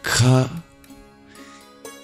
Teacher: The 3 qualities that we can exercise at each point is occlusion, whether we completely obstruct the vocal path, that is making a stop, restricting the airflow like ka. We can aspirate it as well, adding breath to it